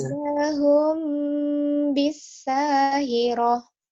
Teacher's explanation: ketika kita menutup bibir kita hum, kita sudah menuju ke ba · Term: ikhfa syafawi